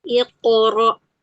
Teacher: Angkat pangkal lidah supaya tebal.